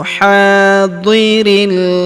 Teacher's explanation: Huruf ha kita panjangkan dua harakat karena terdapat alif di depannya